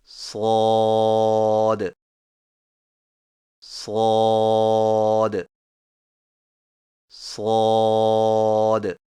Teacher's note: صاد کی ادائیگی میں زبان کی نوک کو سامنے والے نیچے کے دو دانتوں کے کناروں سے مضبوطی سے لگا کر اور زبان کے پچھلے حصے کو تالو کی طرف بلند کرتے ہوئے موٹی اور سیٹی جیسی آواز میں پڑھیں، یعنی صاد صاد صاد۔